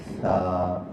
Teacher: ثا اور ذال کی ادائیگی میں زبان کی نوک کو سامنے والے اوپر کے 2 دانتوں کے اندرونی کناروں سے نرمی سے لگا کر نرم اور بغیر سیٹی والی آواز میں پڑھیں. مثلا ثا، دانت یوں ہوتے ہیں، جو دبائے نہیں ہوتے.